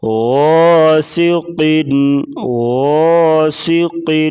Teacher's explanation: غین کو موٹا کریں گے، غین کے ساتھ جو الف ہے یہ الف مدہ ہے۔